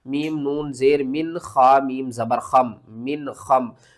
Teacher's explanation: نون ساکن کے بعد حروف حلقی میں سے خا آ رہا ہے تو یہاں پر ہم کیا کریں گے؟ اظہار